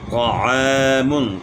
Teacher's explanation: تا کی آواز کو آپ موٹا کریں گے تو پھر طا بنتی ہے، اور موٹا جو ہے نا، طا کو موٹا کرنے کے لیے آپ نے ہونٹ استعمال نہیں کرنے ہیں، زبان تالو کی طرف اٹھے گی اور طا کو آپ نے موٹا پڑھنا ہے